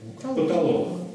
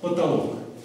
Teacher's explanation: А как мы эти две буквы О произносим? Через А. Да. Через безударное А.